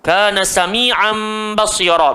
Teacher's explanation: tanwin bertemu ba, iqlab. So nak kena gantikan nun menjadi mim. Jadi dengung 3 harakat.